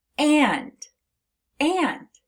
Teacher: So when you have a short A and an N, it sounds like it's coming through your nose, which is why when we say the word and, you actually feel a little bit of a buzzing in your nose. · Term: nasalized A